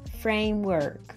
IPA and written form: ˈfreɪmˌwɜrk (framework)